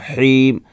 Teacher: حیم ہا ہے تو گلے کے بیچ والے حصے سے ادا ہوگا